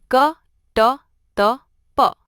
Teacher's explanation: अल्पप्राण व्यंजन जिनमें हवा कम निकलती है।